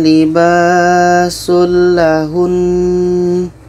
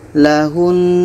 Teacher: Jadi kalau kita berhenti, nun ini tetap kita dengungkan dulu. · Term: nun tasydid